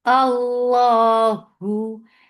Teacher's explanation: And Lafz Jalala will be heavy. And for Dhamma, circle your lips. The sound is short with Ha, and Ha is light.